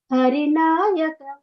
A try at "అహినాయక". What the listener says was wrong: అహి. హరి కాదు, ఆ అహినాయక సింహాసన రాజిత.